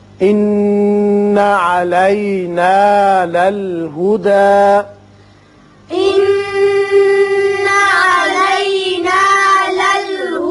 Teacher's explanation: دال کے اوپر کھڑا زبر ہے، ایک الف کے برابر اوپر کو کھینچیں گے، زیادہ طویل نہیں کریں گے